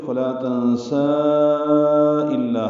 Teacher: حمزہ فاصلے پہ ہونے کی وجہ سے یہ مد آئی ہے۔ جب ملا کر پڑھیں گے تو فلا تنسا الا، ہم اس کو پھر 4 حرکات لمبا کریں گے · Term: مد منفصل